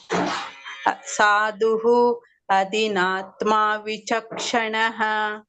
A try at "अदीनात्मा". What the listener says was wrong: न the e is dirgha adinatma